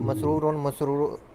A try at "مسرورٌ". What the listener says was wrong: नहीं नहीं नहीं नहीं नहीं मसरूरुन आइन तो आपने पढ़ी नहीं रहे, आइन भी है ना जी।